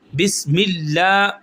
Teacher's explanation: اللہ کے نام سے پہلے زیر آئی ہے تو ہم اس کو موٹا نہیں کریں گے